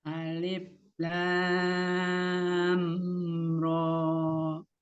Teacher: Lamnya la, panjangkan dulu 6, tapi ro-nya 2. Pertemuan antara lam dengan ro, mim sukun ketemu dengan ro-nya izhar safawiyah, tidak ditahan, tapi mimnya dialirkan sebagian ya, tawasud atau bainnya.